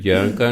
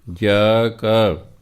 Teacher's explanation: ਇਹਨੂੰ ਜਾਂ ਕਾ ਨਹੀਂ ਪੜ੍ਹਨਾ, ਜਾ ਕਾ। ਜਦੋਂ ਜਾ ਤੋਂ ਬਾਅਦ ਕਾ ਕੇ ਕੀ ਕੀਆਂ ਸਿਉਂ ਆ ਜਾਣ ਤਾਂ ਜਾ ਬਿਨਾਂ ਬਿੰਦੀ ਤੋਂ ਬੋਲਿਆ ਜਾਂਦਾ ਹੈ। ਜਾ ਕਾ ਹੋਵੇ।